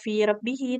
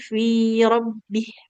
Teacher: kalau mau berhenti di sini nggak boleh fi rabbihi, tapi fi rabbih.